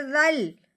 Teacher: ذال کو لام کے ساتھ ملانا ہے، درمیان میں جو دو الف ہیں ان کو بالکل نہیں پڑھنا